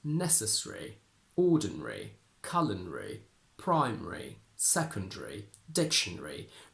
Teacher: although it is possible to pronounce the schwa here, we hardly ever do, and we tend to simply swallow it and say secondary. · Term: elision